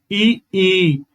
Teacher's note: जब इन स्वरों का उच्चारण होता है हमारे तालू से तो ये होते हैं ताल स्वर